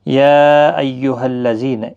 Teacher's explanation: یا یہاں پر مد منفصل ہے، 3 الف کی مقدار کے برابر کھینچ کر پڑھیں